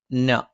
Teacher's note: നാവിന്റെ അറ്റം മേലെ മുൻബല്ലിന്റെ മോണയിലാണ്